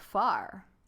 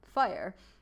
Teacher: she said far instead of fire. And so the AR is often substituted for IRE